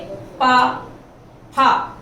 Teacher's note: इसके बाद पंचम वर्ग प वर्ग देखिए, ओष्ठ यानी होठों से बोला जाएगा। जब आप इनका उच्चारण करोगे तो दोनों होठ पास पास मिल जाएंगे